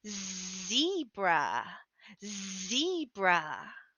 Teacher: place your hand on your throat and say zebra zebra and you will feel that vibration for the z a voiced sound